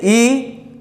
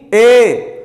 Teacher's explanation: जितना भी आप जोर लगा के बोलेंगे आपका लगभग ही मुख खुला रहेगा। लेकिन जैसे ई की अपेक्षा ए का उच्चारण जैसे आप करेंगे तो आपका मुख थोड़ा खुल जाएगा